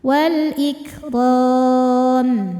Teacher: Mad thabi'inya alif didahului fathah, huruf yang disukunkan nya mim. Maka ra nya panjang boleh dua atau empat atau enam harakat asal konsisten dalam sekali baca. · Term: mad aridh lisukun